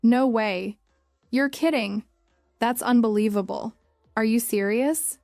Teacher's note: Try saying them with emotion. Feel the rise in your voice when you express surprise.